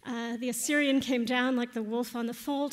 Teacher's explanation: the rising triple meter with uh stress on every third syllable that you see in um example one on your handout from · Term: anapests